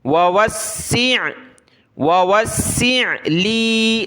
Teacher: ووسع لی، ووسع، دوسرے واو کو سین کے ساتھ ملایا، سین کو عین کے ساتھ، سین کو سخت کریں گے تشدید کی وجہ سے